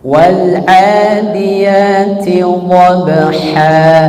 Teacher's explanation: Ain dari mana? Tengah apa? Tengah tenggorokan. Al halqu wastul halqi. Tengah tenggorokan.